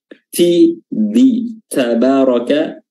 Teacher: huruf dal ini sama makhrajnya dengan huruf ta, ya, ujung lidah bertemu dengan pangkal gigi seri atas. Ta dan da sama makhrajnya.